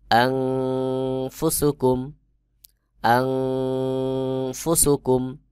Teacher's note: হামজা নুন জবর আন, ফা পেশ ফু, সিন পেশ সু, আনফুসু, কাফ মিম পেশ কুম, আনফুসুকুম। নুন সাকিন এরপরে ফা ইকফার হরফ, এখানে ইকফা গুন্না হবে, অর্থাৎ আন এইটা নাকের ভিতর লুকায়ে পড়তে হবে।